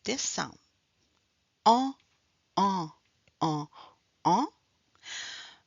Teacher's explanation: l'air passe par la bouche et par le nez Les lèvres légèrement arrondies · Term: voyelle nasale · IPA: [ɑ̃]